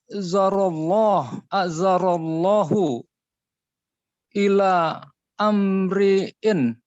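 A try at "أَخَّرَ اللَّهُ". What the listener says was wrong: hamzahnya hamzah wasal nggak dibaca. Akharallahu asalnya.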